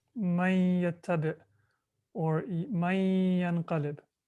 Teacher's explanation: the noon should be merged into the waw or the ya, or the tanween should be merged into the waw or the ya.